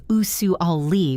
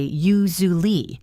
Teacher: We don't say u-su-al-ly with four distinct syllables. We often say u-zu-ly. It sounds almost like one smooth sound.